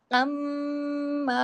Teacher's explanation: بیچ میں غنہ ہے، بیچ میں غنے کی آواز ہے